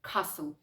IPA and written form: ˈkæsl (castle)